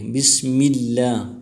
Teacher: بسم اللہ میں لفظ اللہ سے پہلے زیر آیا ہے، تو اس وجہ سے اللہ کے نام کو باریک پڑھیں گے، بسم اللہ. اور اللہ کے نام پر کڑی زبر آیا ہے، کڑی زبر کو ایک الف کی مقدار کھینچ کر پڑھیں گے.